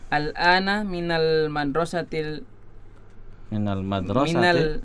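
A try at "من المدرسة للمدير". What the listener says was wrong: ini bukan alif lam, ya, tapi huruf li. Lil mudiri. Jadi minal madrasati lil mudiri, gitu. Coba ulangi.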